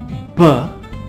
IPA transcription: b